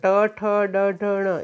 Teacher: ટ ઠ ડ ઢ ણ એ મૂર્ધન્ય છે, પાછળથી દાંતની પાછળના ભાગથી બોલાય, જીભ આમ ઉલટી થશે